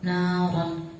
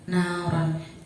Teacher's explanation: apabila ada ro yang berharokat fathah atau fathatain, maka cara bacanya tebal. Contoh, nauron. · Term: rotafim